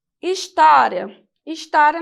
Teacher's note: exemplo também de uma paroxítona terminada em ditongo paroxítona porque porque o sinal tônico recai sobre a penúltima sílaba